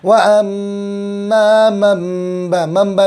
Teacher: नून साकिन के बाद बा या हुआ है, तो जगह छोटा मीम है ऊपर, मीम से बदल देंगे आवाज़ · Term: इक़लाब